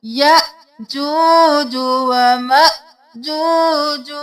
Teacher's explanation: हमजा है झटका देना है दोनों जगह